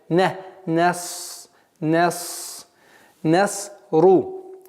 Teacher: Звук нун мягкий звук, а саад твердый, и поэтому твердый звук, естественно, своим влиянием забирает мягкость нуна